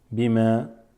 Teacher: So there's no extending the ma here.